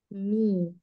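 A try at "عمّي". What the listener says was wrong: Ya, yaknya tasdidnya itu keliru. Harusnya di atas mimnya.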